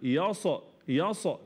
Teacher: خطا ناتج عن ايه ناتج عن قوه الاعتماد على المخرج فبن قلب الصاد لحرف شديد مجهور فبالتالي بعمل حاجه زي القلقله